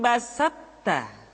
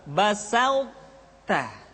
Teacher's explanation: Tidak basatta tapi basauta. Sifat itbaq yang dimiliki oleh huruf to masih tetap ada. Sehingga ketika mengucapkan to bertemu dengan ta, terdengar suara yang menebal.